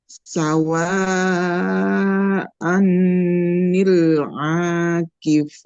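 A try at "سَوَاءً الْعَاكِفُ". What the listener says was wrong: Nah, ini kalau tanwinnya, tanwinnya dihilangkan, diganti dengan fathah biasa. Nah, diganti dengan fathah biasa. Nah, jadi anil akif.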